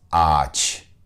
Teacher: all you hear is a long ah sound no brief g sound